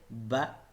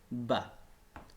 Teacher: ब भी दोनों होंठों के मिलाने से अदा होता है